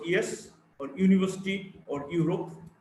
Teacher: Y is a voiced palatal approximant.